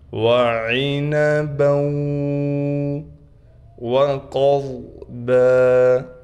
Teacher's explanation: قاف بھی موٹا ہے، ضاد بھی موٹا حروف میں سے ہے، دونوں کو موٹا کر کے پڑھیں گے